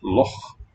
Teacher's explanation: It represents the sound ch, which occurs in Hebrew and Arabic, and the German pronunciation of Nacht, or the Scottish loch, voiceless velar fricative.